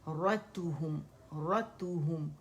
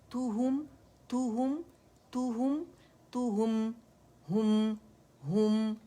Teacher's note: रोल होंगे lips, ता के ऊपर भी और हा के ऊपर भी